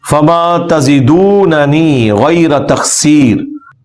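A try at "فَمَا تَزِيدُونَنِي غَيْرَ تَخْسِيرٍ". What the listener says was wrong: نہیں بیٹے آپ غلط پڑھ رہے ہیں، آپ نیچے دھیان سے دیکھیں. فما تزیدو ایسا نہیں پڑھنا. فما تزیدوننی، فما تزیدوننی غیر تقصیر. یا حروف مدہ بھی ہے بیچ میں بیٹا، اس کو بھی پڑھنا ہے. بیٹے آپ کو سمجھ نہیں آ رہی، زا کے بعد نا یا حروف مدہ ہے.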